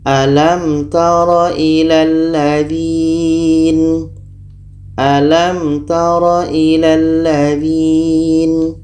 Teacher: Mim jelas, ta jelas, dan tidak boleh dengung. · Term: izhar syafawi